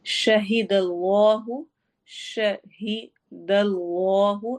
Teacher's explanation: اس میں جلالہ کے لام کو موٹا پڑھنا ہے۔